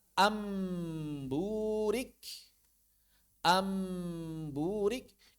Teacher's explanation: yaitu qolbun nuni sakinati awit tanwini bai miman mukhfatan bighunnatin yaitu mengubah huruf nun atau tanwin mengubah suara huruf nun atau tanwin menjadi huruf mim yang diikhfakan dan disertai gunah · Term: iqlab